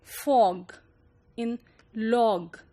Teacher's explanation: open mid-back rounded sound